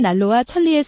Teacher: 뒤에 있는 유음 리을이 앞에 있는 유음 아닌 니은을 유음 리을로 달라지게 한 것 이므로 뒤쪽 의문이 앞쪽 의문에 영향을 끼쳤다고 보아서 자음동화 중에 역행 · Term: 역행 동화